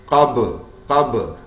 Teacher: با پہ قلقلہ، حروف قطب جد قلقلہ، با ساکن حالت میں